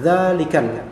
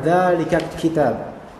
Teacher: alif lam qamariyah yang tidak melebur ke huruf setelah alif lam melainkan mematuk pada lam tersebut atau berhenti pada lam tersebut dalikal